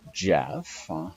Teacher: Now he couldn't get the J, okay, which is it's a combined combined stop consonant with the sibilant